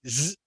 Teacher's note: there is voice from the throat but no air comes from your mouth